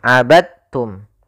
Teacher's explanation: Ya, meskipun dal termasuk huruf qalqalah karena dia memiliki makhraj yang sama dengan ta, maka diidghamkan dalnya kepada huruf ta sehingga dibaca dengan huruf ta-nya langsung.